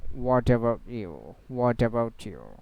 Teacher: So the t is a consonant sound and after the next word it's uh started with a vowel sounds begin with a vowel sound then a consonant uh will be pronounced together with the vowel sound and it will work like an one word